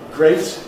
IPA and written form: greɪt (great)